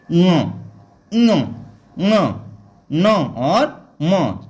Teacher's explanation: अनुनासिक का मतलब इन वर्णों का उच्चारण हमें नाक से करना है, पूरी आवाज से नहीं करना होता।